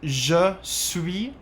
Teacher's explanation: you don't pronounce the s at the end